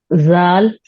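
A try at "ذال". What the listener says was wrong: हाँ, बेटर। एक बार और पढ़ो।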